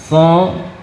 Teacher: Huruf-huruf yang vokalnya kita bunyikan dengan o, so, kemudian apa lagi, to, maka dia termasuk huruf-huruf yang tebal